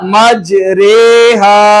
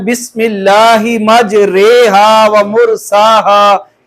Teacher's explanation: इसको हमने मजरी नहीं पढ़ना, ये मजहूल तरीके से राह पढ़ी जाएगी। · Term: अमाला वाली राह